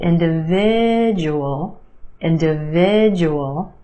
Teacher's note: the second syllable is where you have the schwa · 5 syllables in this word. Emphasis on the third syllable